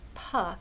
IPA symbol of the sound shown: p